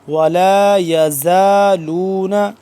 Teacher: زا ذال سے جدا کر کے پڑھیں گے ذال نرمی سے ہوتا ہے اور یہ زا سختی سے پڑھا جاتا ہے